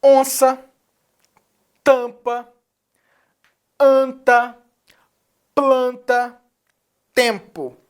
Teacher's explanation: que SN ele vai nasalizar a vogal onça você percebe que você usa o teu nariz a tuas vias nasais para falar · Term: dígrafo vocálico